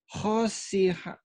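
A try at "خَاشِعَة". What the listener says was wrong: Nggak ada yang panjang. Khosia. Khosia. Khosia. Khosia. Ain. Khosia. Khosia.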